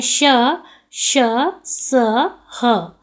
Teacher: इसके उच्चारण में श्वास की प्रबलता के कारण एक प्रकार की गर्मी या ऊष्मा उत्पन्न होती है। इसमें वायु मुख से टकराकर रगड़ खाती हुई निकलती है, इसलिए इन्हें ऊष्म व्यंजन कहा जाता है।